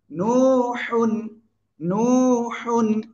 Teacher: পড়বো এখানে কয় আলিফ এক আলিফ কেন পেশের বামে জসম ওয়াও এক আলিফ টেনে পড়তে হবে মাদের হরফের জন্য